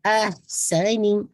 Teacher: مخرج کے جو اس کا مڈل آف دا تھروٹ ہے وہ بہت واضح ہو کہ آپ وسط الحلق سے اس کو ادا کریں. احسنی، سین وسلنگ ساؤنڈ آنی چاہیے.